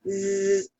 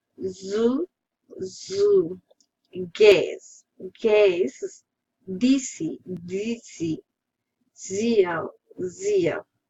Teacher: Spelling is as you know, is voiced counterpart of sa. Its phonation is voiced, which means the vocal cords vibrate during the articulation.